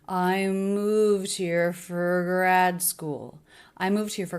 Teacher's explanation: all of the words link together they're smooth but these are the peaks of pitches I moved here for